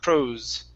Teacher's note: we want to use a voiced S